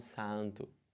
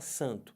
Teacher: Então você junta esse A com esse N e só fala an.